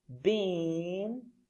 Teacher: So if you take a look at what I'm saying, first, when I pronounce been, my lips are spread out into a smile, like this. Then my tongue is forward and up when I'm pronouncing the word. And it's a long sound. Been, and then many. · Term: lowercase I